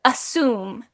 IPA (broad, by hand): əˈsium